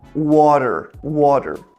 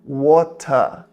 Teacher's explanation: Agora, no sotaque britânico de Londres, por exemplo, esse R do final, eles não puxam, eles fazem muito mais aberto